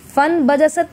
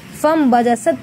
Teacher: لیکن فن بجست نہیں پڑھنا ہے، بلکہ ہم فا کو میم میں ملا کے فم بجست پڑھیں گے